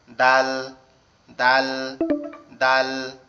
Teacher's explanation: দাল অক্ষরটা আবার আমাদের জিহ্বার আগা সামনের দুই দাঁতের গোড়ার সঙ্গে লাগবে, লেগে উচ্চারিত হবে দাল, দাল, দাল।